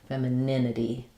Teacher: So for femininity, we stress on the nin syllable. So it sounds like fem with the F vowel, fem.